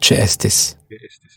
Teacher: It may be that we have an unwritten glottal stop between these vowels.